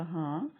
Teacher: बोल तो मुंह से ही रहे हैं ना, लेकिन इसमें नाक का प्रयोग हो रहा है, नाक से साउंड निकल रही है चंद्र बिंदी की। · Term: अनुनासिक